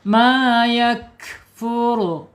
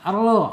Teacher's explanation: Ru tebal, awas. Tebal kerongkongnya agak disempitkan.